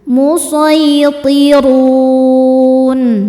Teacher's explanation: Maka rnya panjang boleh dua atau empat atau enam harakat. Asal konsisten dalam sekali duduk. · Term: mad arid lukun, mad arid li sukun